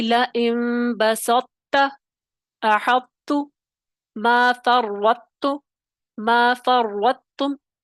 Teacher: تو یہ جو آپ نے ادائیگی ہے اس کا خاص خیال رکھنا ہے یہ ادائیگیاں جو ہیں دقیق ہو جاتی ہیں اس حوالے سے کہ آپ نے پہلے طا کی تفخیم ادا کرتے ساتھ ہی فوراً تا کی باریکی پہ آنا ہے